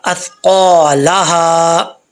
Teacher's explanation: یہ سا سیٹی والا نہیں ہے، سین نہیں ہے، سا ہے، قاف موٹا پڑا جائے گا